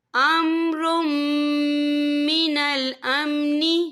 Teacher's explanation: وَإِذَا جَاءَهُمْ أَمْرٌ مِّنَ الْأَمْنِ، یا دیکھیے امرم، را کے پر تنوین ہے، تنوین کے بعد جو ہے میم آ رہا ہے، اور میم جو ہے حروف یرملون میں سے ہے، تو یہاں پر ادغام ہوگا، تو ہم اسے غنّے کے ساتھ پڑھیں گے۔